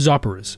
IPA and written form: ˈzoʊpɪrəs (Zopyrus)